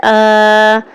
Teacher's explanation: کھڑا زبر ہے، اس کی مقدار بھی ایک الف یعنی 2 حرکات کے برابر لمبا کر کے پڑھیں گے